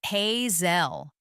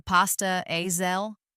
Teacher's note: he pronounced it hey zel with a hard s sound just like he had read it